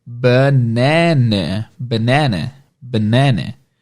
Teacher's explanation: Em inglês isso vai ter 2 sons de schwa sound.